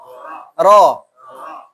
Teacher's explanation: Tidak monyong Ro tidak monyong ya. Ro itu hanya 2 bibir agak merapat saja.